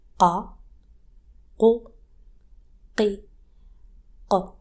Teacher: The sound is close to ka in English, but it's more throaty and sharp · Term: qaf